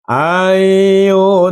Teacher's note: idgam bigunah nun masuk ke huruf ya berdengung dengan halus